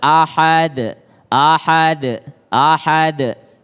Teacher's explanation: Qalqalah Kubro qalqala yang besar karena berada di akhir kalimat maka dia lebih tebal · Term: qalqalah kubra